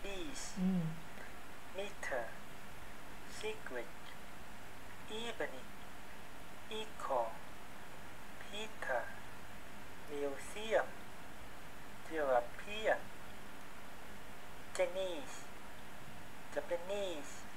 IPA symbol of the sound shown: i: